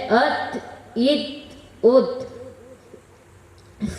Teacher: تا، دال، تو کا مخرج زبان کی نوک اور اوپر کے دانتوں کی جڑ سے ادا ہوتا ہے، جیسے ات، ات، ات۔